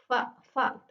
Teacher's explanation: Fa ini ada di antara bibir dan gigi. Fa bibir bawah dan gigi atas. Fa fa ee berupa geseran. lalu mahmus atau tidak bersuara dan tipis. Selanjutnya ada qo.